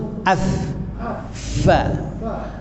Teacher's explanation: Perut bibir bawah dengan gigi atas.